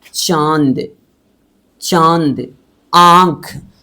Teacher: इसे चंद्र बिंदु कहते हैं। इसका उच्चारण नाक एवं गला दोनों से होता है। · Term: अनुनासिक